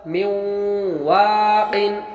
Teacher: نون ساکن مد واو آیا تو غنہ کے ساتھ پڑھیں گے، ادغام بالغنہ ہوا